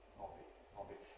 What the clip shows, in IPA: ˈhɒbi